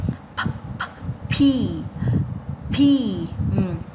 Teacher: chữ P chúng ta bật hơi này.